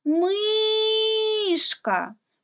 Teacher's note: гукаємо слово мишка перший склад наголошений тепер робимо звуковий аналіз перший звук у слові мишка м приголосний